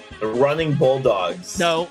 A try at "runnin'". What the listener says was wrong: No. Running. No G. There's no G in there.